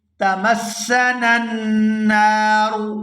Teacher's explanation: یہاں پہلے نون کو دوسرے نون مشدد کے ساتھ ملائیں گے تو غنہ کریں گے